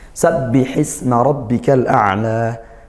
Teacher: Sabbihisma, isma di sini ada sin sukun, kita desiskan. Nah, alirkan suaranya dan juga nafasnya. Sabbihisma rabbika, rabbika ra fathah kita tebalkan karena dia berharokat fathah, tafkhim hukumnya seperti itu dengan menaikkan pangkal lidah tebalnya.